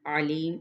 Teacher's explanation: علیم عین وسط حلق سے، لی پہ یا مدہ، میم پہ وقف کیا تو وقف بالاسکان۔